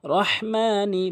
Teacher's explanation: এখানে ছোট হা এনে উচ্চারণ করে রহ বলতে হবে।